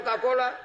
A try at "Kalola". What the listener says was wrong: Honorable Speaker, Deputy Speaker, I'm Kalola, not Kakola.